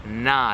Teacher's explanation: that nice round, open, accentuated A, like ah, open your mouth